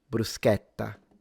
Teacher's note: People in the south, bruschetta, with an open A.